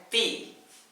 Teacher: Ini makhraj yang dari ujung lidah bertemu dengan pangkal gigi seri atas.